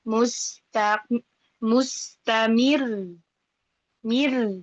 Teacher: Maka kalau wakof di huruf yang bertasydid, hukumnya adalah naber. Suaranya naik sedikit, tapi tidak sampai dihentak banget gitu ya. Dia hanya naik dari standarnya suara yang kita baca awalan gitu ya. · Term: nabr